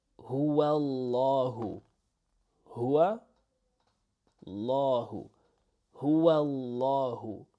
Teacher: So the beginning letter is essentially erased, okay? And the W sound is assimilated into the L sound